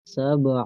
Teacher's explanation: خلق سبع، سین کو کھینچنا نہیں ہے، سبع، اور با حروف قلقلہ میں سے ہے، یہاں پہ اس کو جھٹکا دے کے پڑھیں گے سبع، سبع، سبع، با میں قلقلہ ہوگا، اور عین گلے کے درمیان سے ادا کریں گے